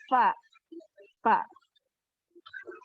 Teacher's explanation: Jadi ujung gigi yang atas bertemu sama bagian dalam bibir bawah.